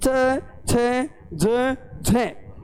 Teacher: लेकिन जो च वर्ग हैं वो अपने वाग्यंत्रों में स्पर्श करने के बाद अचानक मुख से बाहर नहीं निकलता है। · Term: स्पर्श संघर्षी